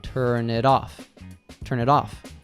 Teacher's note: And then all three words flow together as if they were just one. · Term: connected speech